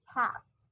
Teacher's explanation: kayak antara A sama E gitu. Ya. Mulutnya dibuka lebar dan dia posisi lidahnya di depan ke tengah.